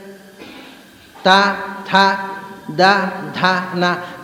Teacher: ಮೇಲೆ ಒಂದು ಹಲ್ಲಿಗೆ ತಾಗಿ ಬರಬೇಕು ಅಕ್ಷರ.